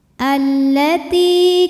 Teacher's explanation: ada Ya Sukun didahului baris kasrah maka huruf ta panjang dua harakat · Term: Mad Thobi'i, mad tabi'i dhahiri